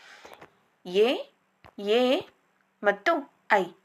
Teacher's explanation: ಗಂಟಲು ಮತ್ತು ದವಡೆ ಎರಡನ್ನು ಕೂಡ ಬಳಸಿ ಉಚ್ಚರಿಸುವಂತಹ ಅಕ್ಷರಗಳು ಕಂಠ ತಾಲು ಅಕ್ಷರಗಳಾಗಿವೆ